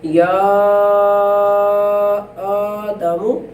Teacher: یا کے اوپر مد ہے تو اسے مد کی وجہ سے کھینچا جائے گا اور لمبا کیا جائے گا، جبکہ حمزہ جو ہے یعنی آدم جو ہے اس کا جو حمزہ ہے اس کے اوپر کھڑی زبر کی وجہ سے تھوڑا سا کھینچا جائے گا.